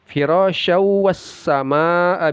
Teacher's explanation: Tanwin bertemu waw, idgham bi gunnah, dimasukkan lalu didengungkan. Firasyaw tidak dibaca syan ya, tapi syaw, masuk dia ke wawnya kemudian dilamakan, digunakan.